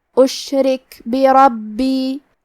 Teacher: کلمت بربی میں حرف الرا پہ زبر ہے، لہذا یہاں را کا حکم ہے تفخیم، ہمیں حرف الرا کو موٹی آواز میں پڑھنا ہے، باقی تشدید کو ظاہر کریں گے، اور آخری میں یا پہ مد کا علامہ ہے، یہ مد جائز منفصل ہے، تو ہم اپنی آواز 2 سے 4 مد کے برابر لمبی کریں گے